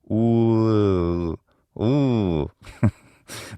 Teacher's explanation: instead of ooh, we unround the lips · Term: high back unrounded vowel, high, back, unrounded vowel